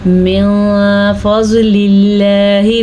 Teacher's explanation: لفظ اللہ کو ہم باریک پڑھیں گے کیونکہ اس سے پہلے زیر ہے، جبکہ ضاد کو ہم پر پڑھیں گے کیونکہ ضاد حروف مستعلیہ میں سے ہے۔